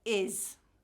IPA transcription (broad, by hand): ɪz